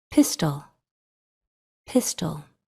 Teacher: That schwa sound just kind of disappears or just integrates into the sounds next to it. It's really hard to isolate that schwa sound.